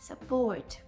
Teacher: Але перший склад є ненаголошений, на нього не падає наш наголос. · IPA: ə